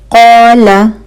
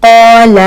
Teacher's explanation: क़ौला, अगर हम इसको पढ़ देंगे क़ौला, ठीक है, तो ला को हमने लंबा कर दिया